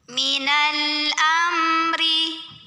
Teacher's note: cara baca mim sukunnya ini adalah dibunyikan dengan jelas bunyi m nya jelas tidak perlu ditahan · Huruf ro dibunyikan secara tarqiq karena barisnya kasroh. Maka bacanya tipis, pangkal lidah datar, tidak perlu naik. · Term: izhar syafawi